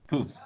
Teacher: it's voiceless, bilabial, and plosive